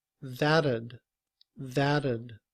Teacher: When we combine ud with that, the T in that sounds like a D